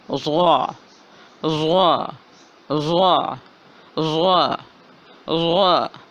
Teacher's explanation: زبان کی بائیں سائیڈ اوپر والی داڑوں سے لگ رہی ہے تو ضاد کی ادائیگی ہو رہی ہے